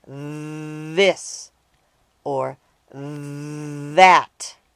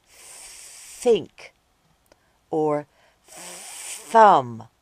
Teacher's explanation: are made by sticking out your tongue and blowing out air the only difference is whether or not you use your voice while you blow